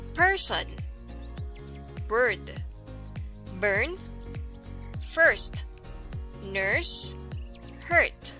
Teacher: It is an open mid-central unrounded vowel, as in fur or bird. As central vowel, the tongue raises toward the roof of the mouth in the middle and even touches lightly the top teeth. However, the tip of the tongue hangs down, but it is not close to the bottom front teeth.